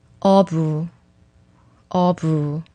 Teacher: I said its sound is similar to P, but it is also pronounced more like B when it is between vowels like here. 어부, 어부.